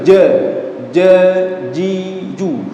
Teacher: Karena huruf jim ya, huruf jim itu tempat keluarnya di tengah lidah. Dan tidak ada sifat hamzahnya sehingga tidak dibaca ja. Kalau ada orang baca ja, ji, ju, itu salah.